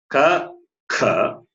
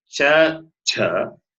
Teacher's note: in fact no vibration at the throat and they are hard consonants